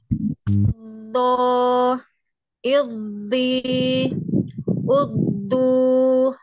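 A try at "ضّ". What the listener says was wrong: Tetap makhrajnya setelah ditasdid, makhrajnya tetap di tepi ya, di tepi lidah. Jadi jangan aldo, jadi pindah ke depan ya. Albo ya tetap di samping. Ini anak dengarnya ada seperti huruf zot, zo ya, bukan zot.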